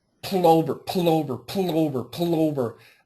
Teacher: using a really super light L the tip of her tongue is outside her teeth